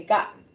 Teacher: we have pausal glottalization, and what that means is when I want to say he said gal, I like to say ga